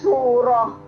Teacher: untuk waqaf ya kalau ta marbutah seperti ini ya menjadi surah seperti ha seperti ha mati ya